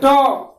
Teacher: जीभ का अगला हिस्सा ऊपर वाले दांत के पीछे का जो मांसल क्षेत्र है वहां पर स्पर्श करता है, तब जाकर के ट ध्वनि का सृष्टि होता है। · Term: मूर्धन्य वर्ण